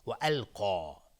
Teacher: قاف از حروف استعلا است، غلیظ تلفظ میشه و الف هم تابع قاف غلیظ